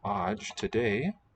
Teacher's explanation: The word is spelled with a final a, but it's just dropped.